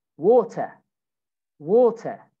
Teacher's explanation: you don't say the r